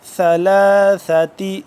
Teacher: زبان کو دونوں دانتوں کے درمیان میں سے باہر کی جانب ہلکا سا زبان کو نکالیں گے تو تب سا ادا ہوگا نرمی سے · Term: ثا